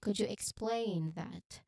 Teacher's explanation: the stress on the second syllable of explain it highlights the action that you're requesting